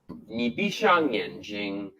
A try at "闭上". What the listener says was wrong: And also the character Shang, 闭上, he pronounced the same as shade. 闭上, 闭上. So the correct pronunciation is actually to avoid using retroflex sound and neither curl your lips or your tongue. Just keep the tongue flat and just say 上, 上. The pronunciation of Chinese is not positioned in the throat. It is positioned at the front of your mouth.